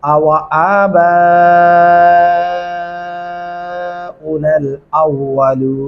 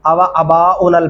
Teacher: अक्सर यहाँ पे एक गलती और हो रही होती है, आवा अबा उनल पढ़ जाते हैं, आवा अबा उनल नहीं पढ़ना, वो बहुत बड़ी गलती होगी। अलिफ के ऊपर खड़ी जबर है और बा के सामने तो फिर अलिफ और चार अल्फी मद्दा आ चुका है, इसलिए इसको तो बहुत ज़्यादा लंबा करेंगे।